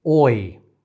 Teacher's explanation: but also moves the tongue from the back to the front there is a lot more tongue movement than off glide and it's also a little bit lengthier than a regular vowel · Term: diphthong